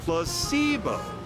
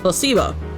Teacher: The stress is on the middle syllable. Placebo. Very good.